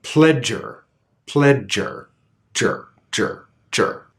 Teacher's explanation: The affricate sound contains a stop. So the affricate will always have a bit stronger aspiration. The air will be harder, more sudden, less smooth.